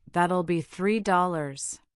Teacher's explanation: When you hear that'll be $3, the intonation usually falls on dollars, making it sound final and polite. · Notice how your tongue taps the roof of your mouth for the T in that, but then quickly moves to the L sound. This fluidity is key to sounding natural.